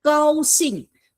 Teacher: 高 is non-aspirated, means there's no puff of air in the sound.